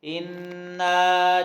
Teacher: اِنَّا نون پہ غنہ کریں گے اور الف مدہ ہے، لمبا کر کے پڑھیں گے